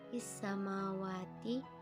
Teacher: Is-samawati, isnya adalah alif lam syamsiyah karena alif lam bertemu dengan salah satu huruf syamsiyah yaitu sin. Dalam hal ini alif lam seolah-olah hilang sehingga yang dibaca adalah huruf selanjutnya yaitu sin